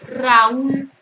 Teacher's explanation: A es abierta. U es cerrada tónica. Entonces aquí tengo un hiato.